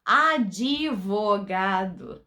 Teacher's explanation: A gente faz uma outra sílaba, na verdade, né? Inserindo o izinho ali, falando advogado